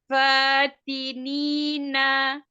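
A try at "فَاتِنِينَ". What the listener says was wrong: Hati-hati di huruf nun. Kurang jahar. Ujung lidah ketemu dengan gusi atas. Yang ada dari giginya. Jangan di pangkal gigi seri, maka hurufnya makanya nggak jelas. Kayak kita menyebut huruf N. Naninuan. Nah, jadi bukan naninu. Nah, itu ujung lidah ketemu di tempat tumbuh gigi, di pangkal gigi seri.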